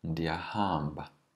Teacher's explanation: Notice that the second last syllable is always stretched in Xhosa. So we don't just say ndiyahamba, ndiyahamba.